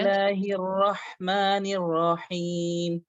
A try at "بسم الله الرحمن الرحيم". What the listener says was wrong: হ্যাঁ হ্যাঁ, সামনে এই পাস না, এটা বরাবরই রাখবেন, তবে ঠোঁট গোল করবেন না, উপর নিচ মোটা হরফ র।